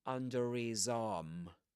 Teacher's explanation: That's interesting because he says under his arm. So he drops the h at the beginning of his, and because of that, the r gets linked to the next sound, which is a vowel sound, right? So you get under his arm. · in this accent, a final r in spelling is only pronounced if right after it comes a vowel sound, like in this case, an I, under his arm.